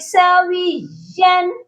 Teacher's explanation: یا کے اوپر جو تنوین ہے ادھر صرف اظہار کرنا ہے، غنہ مت کریے گا